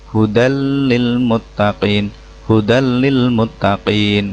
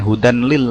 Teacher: Menurut istilah, artinya jika terdapat nun mati atau tanwin bertemu dengan salah satu huruf idgham bila gunah, huruf nun mati dileburkan tanpa dengung